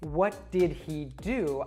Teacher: pronouns that begin with an H like he his or her we will often drop that H sound and connect it to the preceding word · I would actually drop that H sound in he and connect it to did.